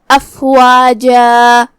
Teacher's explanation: آخری میں یہاں جیم پہ تنوین زبر ہے تو اس پہ مد الف سے روکیں گے، مطلب ہم آخری میں اپنی آواز 2 مد کے برابر لمبی کریں گے